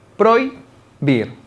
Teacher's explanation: se trata de un diptongo porque se encuentra una vocal abierta que lleva la mayor fuerza de voz y una vocal cerrada